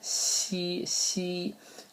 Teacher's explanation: it's almost like an sh but a little bit more forward in the mouth c c uh and it's always going to be followed by